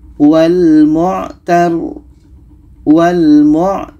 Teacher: r-nya kita alirkan ada tawasut setelah itu baru matikan rnya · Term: ro tasdid